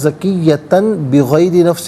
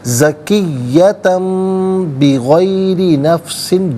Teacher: نفسا زکیۃن، تا پر 2 زبر کی تنوین، اس کے بعد با آ رہا ہے، تنوین کے بعد حرف با آئے تو تنوین کو یا نون ساکن کو میم سے چینج کر کے میم کی آواز کو غنّے کے ساتھ ادا کرتے ہیں۔ تو یہاں زکیۃن بغیر نفس نہیں پڑھیں گے، بلکہ زکیۃم بغیر نفس، بی علیحدہ غیری علیحدہ ملا کر پڑھیں گے، بغیری۔